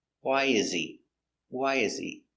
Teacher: late why why is the important word so we stress why he is not stressed so the H is silent